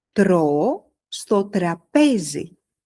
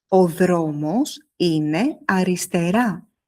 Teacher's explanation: Le R grec est devant. La langue est légère. Elle touche, elle rebondit, elle ne force pas.